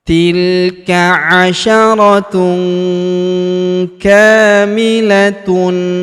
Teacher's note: huruf tun bertemu huruf k maka tanwin unnya melebur ke huruf k. Kita baca dengung dan samar. Dengungnya kita tahan dua sampai harakat.